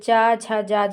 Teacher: संघर्षी व्यंजन है, स्पर्श संघर्षी व्यंजन। जैसे चा, छा, जा, झा के उच्चारण में भी संघर्ष की स्थिति बनती है, अतः इन्हें स्पर्श संघर्षी व्यंजन भी कहते हैं।